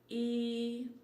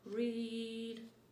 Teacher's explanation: the e sound is made with the front smiley movement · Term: long